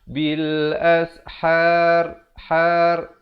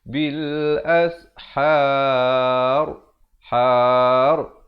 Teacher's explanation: Ra ni dibaca tebal. Jangan pula kita baca bil ashar.